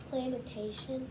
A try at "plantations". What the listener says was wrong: Plantations. You're adding syllables in there.